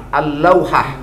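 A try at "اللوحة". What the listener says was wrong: Itu la-nya nggak kebaca yang pertama. Jadi maksudnya dikasih tasdid. Itu bagian huruf qamariyah, bagian huruf syamsiyah.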